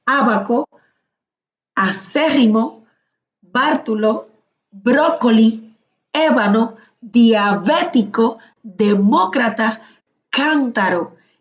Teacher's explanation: estas tienen su tilde o la mayor fuerza de voz en la antepenúltima sílaba. Entonces, estas llevan tilde.